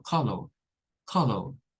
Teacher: los londinenses, por ejemplo, no nos dicen la R y dicen algo como color, color.